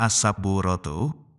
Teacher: Idgham Syamsiyah yaitu memasukkan huruf alif lam menjadi huruf Syamsiah maksudnya huruf Syamsiah tersebut dibaca karena adanya tasydid dan huruf alif lam tetap ada namun tidak dibunyikan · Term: Idgham Syamsiah